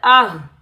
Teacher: حمزہ ہا زبر آہ، اس ہا کو سینے کی طرف والے حلق سے ادا کریں گے